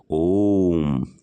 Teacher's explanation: जिसके उच्चारण में दीर्घ से भी अधिक समय लगता है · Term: प्लुत स्वर